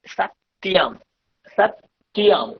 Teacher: যেখানে যেখানে অনুস্বার আছে আমরা অনুস্বার উচ্চারণ করবো না, আমরা ম উচ্চারণ করবো।